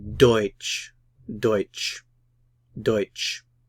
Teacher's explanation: The stress is on the double vowel, the diphthong, oi